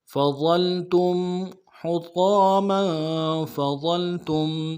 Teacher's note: تا کو میم ساکن کے ساتھ ملانا ہے، غنہ کریں گے